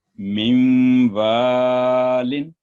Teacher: نون ساکن کے بعد واو ہے مشدد، یہاں پر نون کو جب ادغام کریں گے اس کا تو گنا ہوگا